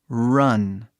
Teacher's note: Esse R, né? Bem grosso, bem forte e grosso e quase um vogal, né? Um consoante que é meio vogal também. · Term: R grosso